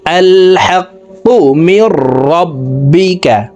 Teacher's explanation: কফকে জিহ্বার গোড়া থেকে উচ্চারণ করতে হবে কারণ কফের মখরাজ জিহ্বার গোড়া তার বরাবর উপরের তালুর সঙ্গে লাগাইয়া উচ্চারণ করিয়া পড়িতে হয়